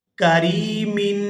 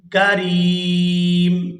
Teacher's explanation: یہاں میم ساکن ہو جائے گی، تنوین ختم ہو جائے گی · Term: وقف